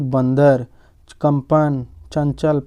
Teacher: अनुस्वार का उच्चारण करते समय वायु केवल नाक से बाहर आती है